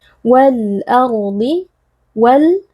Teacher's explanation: alif lam yang bertemu dengan huruf qamariyah yaitu Hamzah di sini lam sukunnya dibaca dengan izhar atau dengan jelas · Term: alif lam Al qamariyah